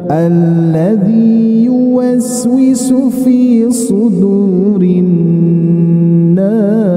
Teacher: pas mengambil irama datar, awalnya kita seperti irama naik dulu ya. Awalnya saja.